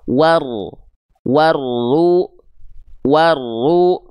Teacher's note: Warru warru ya. Jadi enggak perlu dibaca waru waru jangan dipanjangkan wunnya. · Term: alif lam syamsiyah